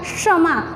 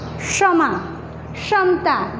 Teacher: कैसे, जैसे कि मैंने यहाँ पे उदाहरण लिखे हैं, क्षत्रिय का श है ना, उसका उच्चारण क प्लस ये मूर्धन्य श का उपयोग होगा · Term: संयुक्त व्यंजन